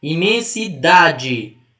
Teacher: Como a penúltima é a mais forte, ela é uma palavra paroxítona.